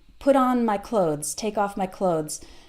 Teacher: the th is there but it's very very short